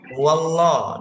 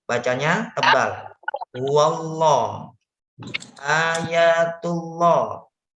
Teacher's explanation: di sini ada wawu berharokat fathah. Bertemu dengan lafaz Allah, bacanya tebal.